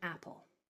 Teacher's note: It's not the e. It's the L. It's the L that's making a vowel sound. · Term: liquid consonants